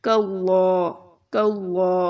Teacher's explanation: اور لام کے اوپر کھڑا زبر ہے تو اس کو ہم لمبا بھی کریں گے